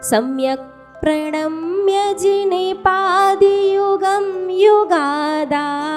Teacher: सम्यक तो ह्रस्व शुरू करो और आगे बढ़ते बढ़ते स्वर को दीर्घ, वॉल्यूम दीर्घ नहीं करना, स्वर को।